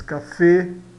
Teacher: No final ele sempre soa o e fechado. O f soa sempre como em português.